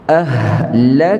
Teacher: Lepaskan angin itu kita namakan dia hamas. Hamas. Lak asalnya lak, lepas angin.